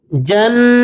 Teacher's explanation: نون مشدد ہے، غنے کے ساتھ پڑھیں گے